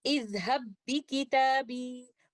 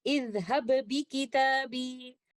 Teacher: We will not do any qalqala for the first letter ba, because then I am reciting the first ba with idhar, and this is I need to avoid, because here in mutamathilan letters I have the conditions of idgham, and this idgham is idgham kamil. · the first letter ba, which is sakin, will completely merge into the second letter ba, which is mutaharrik, and we will recite it like this, idhab bi kitabi.